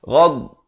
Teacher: Jangan ada pantulan karena itu bukan huruf qalqalah.